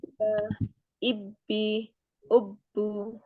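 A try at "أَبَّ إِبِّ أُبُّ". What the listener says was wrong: Agak medok sih di abba, ibi, ubu. Tapi tinggal ngerem itu aja, Bu. Diringankan lagi. Haknya dihilangkan.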